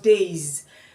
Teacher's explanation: All vowels are voiced. And so when we find days, the A is voiced. And so the S will be produced as Z.